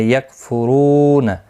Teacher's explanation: رو واو مدہ ہے، ایک الف کی مقدار کے برابر کھینچ کر پڑھیں گے